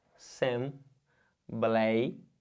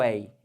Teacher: Olha o ditongo aberto ei